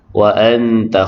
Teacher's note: nun mati bertemu dengan ta ikhfah hakiki dengung sekadar dua harakat